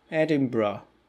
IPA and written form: ˈedɪnbə (Edinburgh)